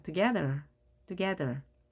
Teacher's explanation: A에 힘이 생겨서 together 이렇게 발음합니다.